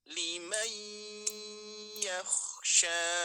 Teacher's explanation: Tapi dibacanya bukan liman yakhsha, tapi limai, langsung memasuki ke huruf ya-nya.